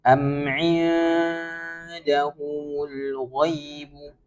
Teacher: huruf ain langsung didengungkan menuju huruf nun yang bertemu dal, betul ya, ikhfa hakiki, sehingga langsung mendengung ya, mendengungnya tapi bukan yang ng ya, tapi gitu ya.